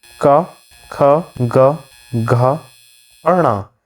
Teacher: का वर्ग, हमारा पूरा कंठ से बोला जाता है।